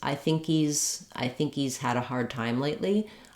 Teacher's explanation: in some cases we actually can drop the H of he's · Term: reduced initial H sound